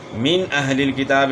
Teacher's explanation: نون ساکن کے بعد حروف حلقی میں سے حمزہ آ گیا ہے تو اس لیے یہاں غنہ نہیں ہوگا بلکہ اظہار ہوگا، یعنی غنہ نہیں ہوگا۔